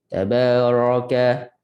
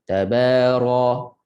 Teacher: Dan ra dia ada sifat takrir, getaran. Satu kali getaran.